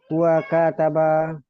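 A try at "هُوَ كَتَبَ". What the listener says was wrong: Tadi sudah betul, jangan dipanjangkan K-nya Mak. betul kataba, tapi sedikit apa Mak? Kataba kayak gitu. Kataba Pendekkan aja Mak. Huwa kataba gitu aja.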